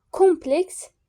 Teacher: Kompleks birinci hecaya vurğu düşəcək